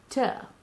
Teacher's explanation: It is alveolar because in this sound, the tip of the tongue comes to the teeth ridge, t. And it is a plosive because the breath comes out of the mouth with some explosive noise. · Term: t sound